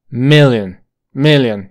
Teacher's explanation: tiene dos sílabas esta palabra la forma fuerte está en la primera sílaba e corta million million y la segunda es una I Million